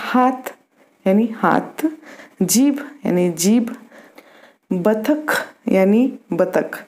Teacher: मेवाती बोली में महाप्राण की जगह अल्पप्राण ध्वनियों का प्रयोग होता है